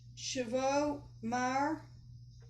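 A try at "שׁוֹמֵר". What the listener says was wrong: Shomer. in this case, the Vav is a vowel, O. You know how that symbol can be either the consonant Vav or the vowel O. So here it's an O.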